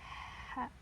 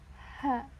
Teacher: Nah, ini salah satu huruf yang bersifat salah satu sifatnya adalah hamas, yaitu berangin. Jadi kita harus lembut mengeluarkannya. Ha. Beda dengan ha.